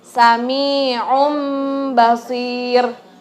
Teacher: jadi bukan Sami on Basir lagi menjadi mim Tapi ditahan disunahkan selama dua ketukan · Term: iqlab